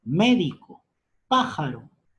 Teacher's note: Esdrújulas. Su sílaba tónica está en la antepenúltima sílaba.